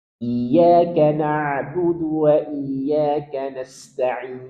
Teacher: Sedikit kita alirkan karena nun punya sifat bainiah.